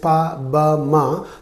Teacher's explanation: formed by using both lips together · In the pronunciation of this pa, ba, ma, the lips are coming together. So therefore, these are called pa, ba, ma are called bilabials.